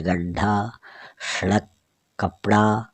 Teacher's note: ढ ढ कि जो उच्छिप्त व्यंजन होते हैं, ढ ढ इसको हम उच्चारित करते हैं तो अपनी जो जीभ है वो झटके से तालू के टकरा कर नीचे गिरती है · जैसे गड्ढा, सड़क, कपड़ा, इनमें क्या होता है, अपनी जीभ झटके से नीचे आती है